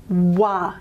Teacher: the w, which is the labiovelar approximant